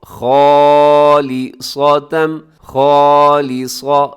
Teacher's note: یہاں الف سے پہلے خا موٹا ہے تو الف بھی موٹا پڑ جائے گا، اسے خا نہیں کرنا، خا غلط ہو جائے گا۔